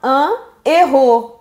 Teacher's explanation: On ne peut pas faire la liaison. Pourquoi? Parce que héros a un H aspiré.